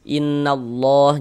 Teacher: Maka lafaz Allahnya dibaca tebal. Huruf lam jalalahnya dibaca tabkhim